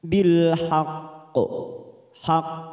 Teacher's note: ada huruf qf yang mati di akhir kalimat dan disertai tanda tasdid namanya bacaan Qalqalah Kubro kita pantulkan dengan kuat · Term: qalqalah kubra